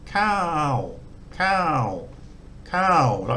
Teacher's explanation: a live syllable which is middle class so cow cow cow with no no tone going up or down just try and keep it flat in the middle